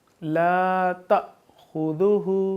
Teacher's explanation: اب الف کے اوپر جزم ہے تو اس کو ہم جھٹکا دے کر پڑھیں گے